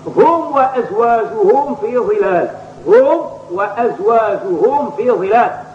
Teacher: فهذه الميم قبل الفاء والواو يتعين الحرص على إظهارها، ولكن بدون إفحاش وبدون مبالغة أي بدون خروج إلى جهة القلقلة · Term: الإظهار